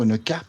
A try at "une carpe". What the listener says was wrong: Bah, quand tu le prononces, on dirait que tu dis carte.